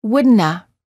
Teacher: in more casual situations, the have of the word would not have sounds like a, as in wouldn't a